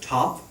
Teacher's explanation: the English T sound, like top, that T sound is neither the dental T nor the retroflex T. It's neither the nor da.